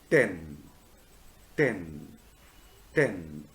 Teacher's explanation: i have already explained is called a stop or a plosive a full description of the tor sound at the beginning of a word like 10 is a voiceless alveolar stop